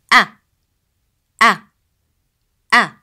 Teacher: The sound of a, as in elif, is pronounced from the lower part of throat.